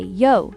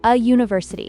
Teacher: university starts with a yo sound, which is a consonant sound despite starting with a vowel letter. So, you'd say a university.